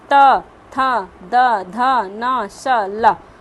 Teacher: दांतो पर जीभ लगाने से जो हम बोलते हैं वर्ण वो क्या आपका दंत हो गया